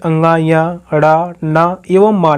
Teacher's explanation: सभी वर्ग के पंचमा अक्षर जैसे अंगा, ञ या, ण, न एवं म नासिक वर्ड है। इनके उच्चारण में नासिका यानी नाक से होकर हवा बाहर निकलती है।